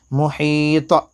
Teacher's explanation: یہاں پر قلقلہ ہوگا، حروف قلقلہ کے 5 حروف میں سے یہاں پر طا ہے، اس پر جزم ہے